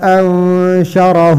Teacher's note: نون ساکن ہے، نون ساکن کے بعد شن آیا، ادھر اخفا ہوگا